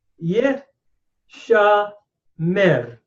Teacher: What has happened here is that the nun of the nifal stem has assimilated into the sheen by what we call progressive assimilation. Notice that the chart, nun sheen becomes sheen with a doggish, what we call forte, which means doubling of the sheen.